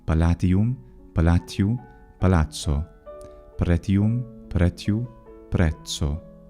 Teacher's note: After a T, the reduction of short E into a consonant sound regularly produces ts, the affricate.